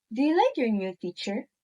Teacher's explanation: The pitch goes up at the end showing it's a yes or no question.